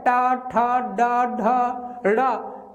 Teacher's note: डा नामक वर्ण का उच्चारण स्थान है दोस्तों तो मूर्धा